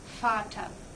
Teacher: The English V in German is V, and it's pronounced with an F sound.